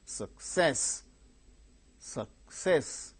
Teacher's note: two syllables are there second syllable gains stress